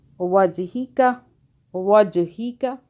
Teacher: جیم پہ قلقلہ کیا، جھٹکے سے پڑا